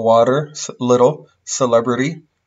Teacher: The T will change into the flap. And have a r sound. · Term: alveolar flap